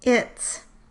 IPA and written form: ɪ̃t˭s͋ (ITS)